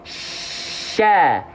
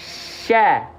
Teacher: Arahkan Tengah lidah ke langit-langit kasih celah untuk sifat tafasyi menyebar udara dari mulut Sya Engak enggak perlu pakai bibir-bibir yang monyong-monyong Sya tidak tapi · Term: huruf syin